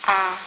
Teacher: Voice is nasal. There is nasal emission of air. It's difficult for the subject to produce fricative sounds and plosive sounds.